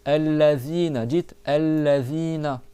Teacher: Et là tu as le zel qu'on a vu tout à l'heure. Le bout de la langue, tu le fais passer sous les dents du haut.